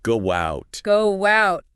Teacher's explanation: Or between two vowel sounds like go out. You might hear a little W. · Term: intrusion